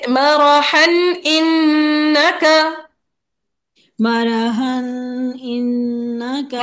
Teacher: नून मुशद्दद में मुशद्दद का गुन्ना हर हाल में होता है, कभी भी नहीं ड्रॉप होता